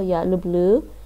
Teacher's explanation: the stress is at the end, the last syllable, я люблю. But the rest, the stress is on the first.